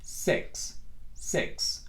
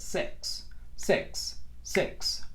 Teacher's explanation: Nos cae como un poquito entre la I y la E del español. Nunca va a sonar como I, va a sonar como E. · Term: I corta